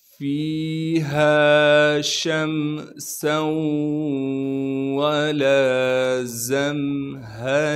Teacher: ہا کو صاف کر کے گلے سے نکالیں گے، گلے کا وہ حصہ جو سینے کی جانب ہے